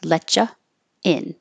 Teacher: If you have letcha, then you're not rounding your lips. Letcha in. And you don't have the invisible W.